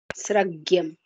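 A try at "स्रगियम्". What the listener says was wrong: Sragiyam, not sragyam. Sragiyam. Ikara will remain. Sragiyam. Sragiyam, sragiyam, not sragyam. Srak. Iyam.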